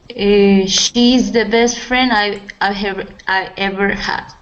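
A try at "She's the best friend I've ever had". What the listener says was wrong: make sure to pronounce that V I've ever had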